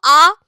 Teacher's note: last হচ্ছে আ এর পজিশনটাই এমন তুমি উচ্চারণ করে দেখো আ দেখবে জীব সববার নিচে এবং সেন্টার পজিশনে না সামনে এগিয়ে আছে না পেছনে পিছিয়ে গেছে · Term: কেন্দ্রীয় নিম্ন